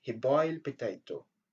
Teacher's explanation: il y a les sons de à la fin de boiled qui est omis, qui n'est pas prononcé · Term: l'élision